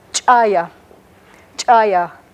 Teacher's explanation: they have what might you might perceive as a little hiccup or a little catch in the voice